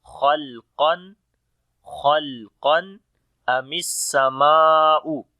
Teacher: Khalqan, kha, qaf and alif. These three letters we read in heavy sound. Lam we read in light sound.